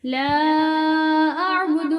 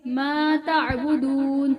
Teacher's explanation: لا اعبد ما تعبدون، لا اعبد ما تعبدون، لا اعبد دال کو لمبا نہیں کریں گے، ما تعبدون اگلے دال کو لمبا کریں گے کیونکہ اس کے ساتھ واو ہے۔ ولا انتم، انتم نون پر گنہ کیا جائے گا۔